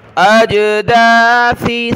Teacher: سا پر زبان نکالیں، اس کی جگہ آپ نے سین نہیں پڑھنا